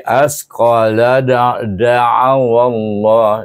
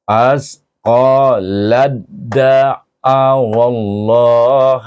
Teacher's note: kalau berhenti saya baca qalat, tapi kalau saya menyambung saya akan baca lad. Iaitu saya terus idghamkan dia pada huruf dal. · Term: idgham mutajanisain